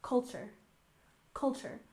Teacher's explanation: in culture we stress the first syllable